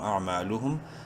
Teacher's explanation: حمزہ عین زبر اع، میم الف زبر ما، ایک الف برابر لمبا کریں گے میم کو الف مدہ کی وجہ سے